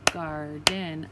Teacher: When I clap it out, garden, I hear the R sound in that first syllable. Now the second part is tricky because they're talking about long A's, but because of the R, you're not actually going to hear it really say A.